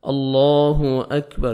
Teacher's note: last میں جب آپ سٹاپ کریں گے، وقف کریں گے، تو را ساکن ہو جائے گا، را کو مجزم آ جائے گی، اور را ساکن سے پہلے جب زبر آتا ہے را کو پر کرتے ہیں